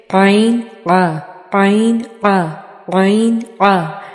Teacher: अलिफ की आवाज़ तो बिल्कुल नॉर्मल सी स्ट्रेट सी होती है और वो हमारे मुंह से अदा होता है, हल्क से अदा नहीं होता। लेकिन आइन की आवाज़ थोड़ी निगलने की सी होती है और वो हमारे हल्क के दरमियानी हिस्से से अदा होता है